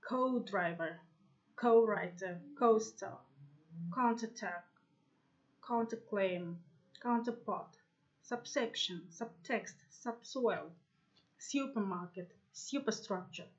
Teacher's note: in some words with prefixes the prefix itself is stressed